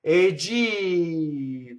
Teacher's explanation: you elongate the E and you don't stop as you do in speech.